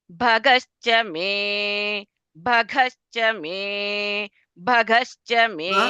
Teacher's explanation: Mahaprana is coming for gha. Bha भग only is Mahaprana.